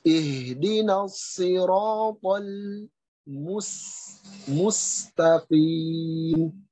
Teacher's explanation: Karena huruf so, huruf ro, huruf to itu tebal, tetapi kemudian ketika masuk huruf lam itu tipis.